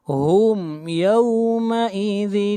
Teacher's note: فوقہم، قاف کو موٹا پڑھیں گے، قاف حروف مستعلیہ میں سے ہے۔ ہم یومئذ، ہم یہاں پر میم کو ظاہر کر کے پڑھیں گے، اظہار شفوی ہوگا